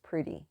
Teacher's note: instead of the T sound it's a D sound